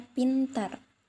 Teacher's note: P pada posisi awal pada kata pintar diucapkan secara meletup atau volosif jadi terdapat kata letupan di sana contohnya pintar sedangkan